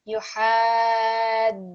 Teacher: Remember, this is our mad kabir. So this is our big mad, which is going to be at least 4 to 6 seconds.